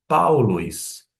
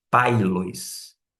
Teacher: vai ter um som não de e sim de au. Por isso que você pronuncia paulois e não pailois. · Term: ditongo